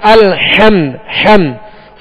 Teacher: میم پر جزم ہے تو یہاں قلقلہ نہیں کریں گے، سکون کے ساتھ ادا کریں گے، جماؤ کے ساتھ ادا کریں گے.